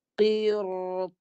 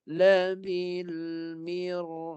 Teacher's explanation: Ra tu mati, selepasnya ada huruf yang sifat isti'la tebal, maka ra tu dibaca tebal. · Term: ra tebal